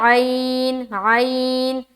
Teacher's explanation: یہ جو عین ہے نا، عین کا بھی مخرج وہی ہے، وسط حلق جو ہا کا ہے، اس ہا کا جو مخرج ہے نا وہی عین کا بھی مخرج ہے، وسط حلق یعنی حلق کا درمیانی حصہ۔